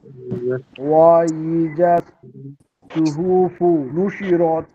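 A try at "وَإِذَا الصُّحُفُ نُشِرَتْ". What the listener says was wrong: হ্যাঁ, এই সুহুতে একটু টান হয়ে গেল। এই টানটুকু আবার দেখেন তো, টান হবে না।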